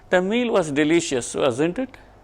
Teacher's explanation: If I am fairly sure that he is going to agree with me, the intonation is going to be a falling one. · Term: falling tone